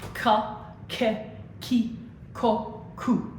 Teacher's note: we're sticking with the pure italian vowels so no diphthongs